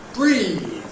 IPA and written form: briːð (breathe)